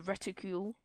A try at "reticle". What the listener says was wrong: It's reticle, not reticule. Reticle.